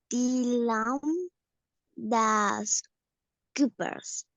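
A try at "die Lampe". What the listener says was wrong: Y lampa. Le faltó el lampa.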